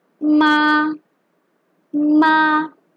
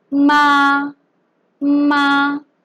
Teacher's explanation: It is made up of an initial m, a vowel a, and the tone, the first tone